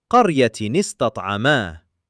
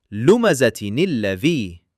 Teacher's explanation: if the first saakin is a noon in the shape of tanween, it's given a kasrah, turning that noon sound into nee